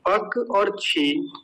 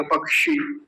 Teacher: क हलंत और मूर्धन्य सकार इन दोनों को मिलके बनता है ये क और श